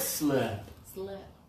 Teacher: I can hear that your tongue is low in your mouth and you're breathing more.